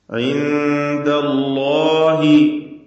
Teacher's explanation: അല്ലാഹ് എന്ന ഇസ്മുൽ ജലാലയിലെ ലാമിനെ തഫ്ഖീം ചെയ്യുകയാണ് ഇവിടെ വേണ്ടത്, തടിപ്പിച്ചുച്ചരിക്കുക